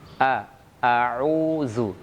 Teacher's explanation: Ketika membaca hamzah, maka harus hamzah tersebut keluar dari makhrajnya. Makhraj hamzah sebagaimana kita ketahui adalah pangkal tenggorokan. Jadi kita harus sempurna memberikan hak daripada huruf hamzah tersebut.